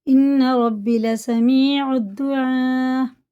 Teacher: مد متصل ہے، 5 الف کے برابر کیجیے گا